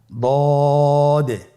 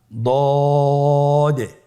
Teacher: দদের মাখরাজ জিহ্বার গোড়ার কিনারা সামনের উপরের 2 দাঁতের গোড়ার সঙ্গে লাগিয়ে উচ্চারিত হয়।